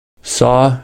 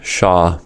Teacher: Sa and sha are voiceless fricatives that occur proximal to each other. For sa, the tip of the tongue is close to the alveolar ridge.